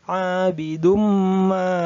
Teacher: juga didengungkan bacanya didengungkan ditahan dua harokat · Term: Idgham Bighunnah